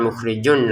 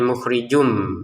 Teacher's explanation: Wallahu 2 harokat, panjangnya lam, mukhrijun tulisannya mukhrijun bertemu mim, masukin tanwinnya ke mim sehingga bacanya bukan mukhrijun lagi tapi mukhrijum